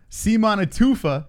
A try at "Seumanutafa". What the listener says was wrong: Seumanutafa? Seumanutafa. Oh, Seumanutafa. Not Tufa, Tafa. Seumanutafa.